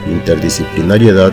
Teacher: en el caso de interdisciplinariedad la sílaba tónica es la última es una palabra aguda